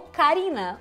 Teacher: é só uma batida rápida nos alvéolos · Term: tep alveolar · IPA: ɾ